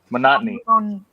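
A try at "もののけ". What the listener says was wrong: Mononoke. There's 2 no-nos in it.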